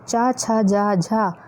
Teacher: चा, छा, जा, झा का उच्चारण स्थान तालु है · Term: तालव्य व्यंजन